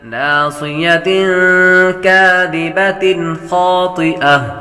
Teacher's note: ناصیۃ تنوین کے بعد کاف حروف اخفا میں سے آ رہا ہے، غنہ کریں گے